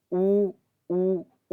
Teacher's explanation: उ उ उ में हमारा होट क्या होता है गोल होता है